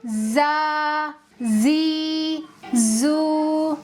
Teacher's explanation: ان حرفوں کو ادا کرتے وقت ایک تیز آواز سیٹی کی طرح نکلے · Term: سفیر